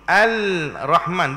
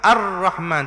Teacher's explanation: lam tu ada tapi kita sebut Tak ada dia maka ar-rahman terus bukan al-rahman d ha itulah makna idram Syamsiah ataupun alif lam syamsiah tu